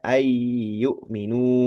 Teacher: nunnya panjang dua harakat